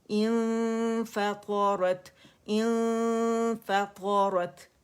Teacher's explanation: इंफा तो बारीक फा होगा क्योंकि मखरज के करीब जाना है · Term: इख्फा